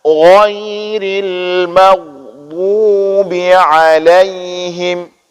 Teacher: Ghairil bukan ghai, tapi gha, harus tebal bacaannya. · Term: huruf ghin